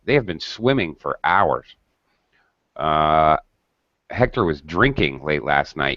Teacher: even in the statement we tend to um highlight or speak those continuous verbs with a higher pitch